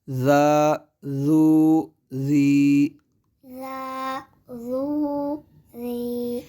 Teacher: ذال کو ایک تو باریک پڑھنا ہے اور دوسرا بغیر سیٹی کے پڑھنا ہے، ان کے اس کو زا نہیں پڑھیں گے، پھر اس کو پر نہیں کریں گے ذا ذو ذی نہیں بلکہ ذا ذو ذی۔